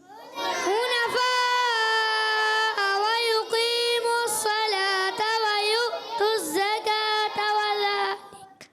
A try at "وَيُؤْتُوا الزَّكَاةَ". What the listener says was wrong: دیکھیں وَيُؤْتُوا الزَّكَاةَ، تا نہیں پڑھنا، وَيُؤْتُوا الزَّكَاةَ وقف کرنا ہے، ٹھیک ہے.